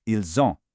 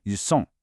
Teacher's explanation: Because ils ends in an s and ont begins with a vowel, we do what's called a liaison, connecting those sounds together. It creates a buzzing z sound, ils ont. Now, contrast that with ils sont, meaning they are. · the s in sont makes a very sharp hissing s sound